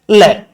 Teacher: जीभ के बगल से बाहर निकलती है, पार्श्विक बोलते हैं।